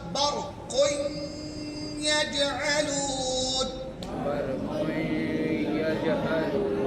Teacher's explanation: इदगाम नाकिस होगा, गुन्ना होगा, इदगाम होगा।